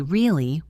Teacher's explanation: For example, if I say the simple word really with a flat voice, it just means I am asking for confirmation. But if I say really with a high pitch at the end, it means I am surprised. Or if I say really with a low flat tone, it might mean I do not believe you or I am disappointed.